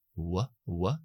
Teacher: las articulaciones se aproximan sin producir esa fricción de aire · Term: aproxima antes